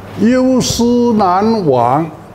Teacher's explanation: 把思和忘都读平平